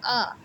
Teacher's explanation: আ যখন উচ্চারণ করবে তখন দেখবে জীবটা একদমই নিচের দিকে থাকবে আ জীবটা একদম নিচে মেশিতে পড়ে থাকবে ঠিক আছে তাহলে এটাকে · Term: নিম্ন স্বরধ্বনি